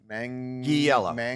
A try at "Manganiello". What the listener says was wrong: Manganello. You said manja. With a soft G. Manganiello. you can say Manganiello or Manganello.